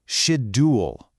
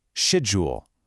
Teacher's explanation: In the UK, some speakers use a very crisp d sound